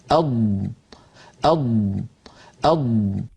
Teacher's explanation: ضاد کا مخرج، اض، اض، اض، ملاحظہ فرمائیں کہ ضاد زبان کی اطراف یا کنارے اور ان کے ساتھ جو اوپر داڑھ ہیں اس سے ادا ہوتا ہے